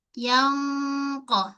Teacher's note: Q nun jumpa qaf. Kat sini berlaku hukum ikhfa tapi dengan tebal. Masamkan mulut. Jangan muncung mulut. · Dia melibatkan terangkatnya pangkal lidah. So jadi tebal. Yangqa. Ha mulut kita dalam keadaan tidak senyum. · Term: Qaf tebal